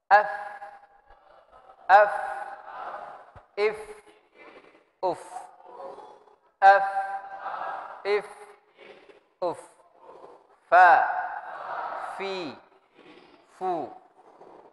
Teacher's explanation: Dia dari bibir af, tapi bersamaan dengan dua gigi kita yang bagian atas. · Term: huruf fa